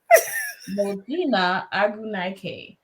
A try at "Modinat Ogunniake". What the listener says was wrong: You said it with confidence. I was like, turn that A into an O.